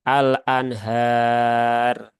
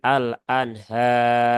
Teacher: Tetapi tadi sudah kita contohkan menggunakan 4 harokat, maka dikonsistenkan pakai 4 harokat terus. Ya, dan roknya dibaca tebal, ya, bukan al-anhar.